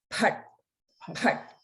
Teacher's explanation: And sometimes there may be a variation of saying farta as the pronunciation of Mahaprana Pa, but the way that that I was taught is that it's the Mahaprana Pat, Pat. So there's a strong flowing out of breath.